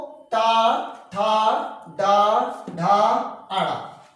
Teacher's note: टा वर्ग को मूर्धन्य से या मूर्धा से बोलते हैं